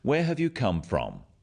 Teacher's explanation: notice also the falling tone with these questions where have you come from this makes the question sound friendly but be careful not to ask too many questions like this